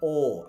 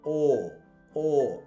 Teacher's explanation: এটা একটা ও সাউন্ড আছে, এই জন্য এটা একটু টান হবে, আর ব্রিটিশ আর উচ্চারণ করবে না